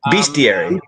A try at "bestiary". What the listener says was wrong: No, look at, there's no bestiary. There's no A in it. Bestiary.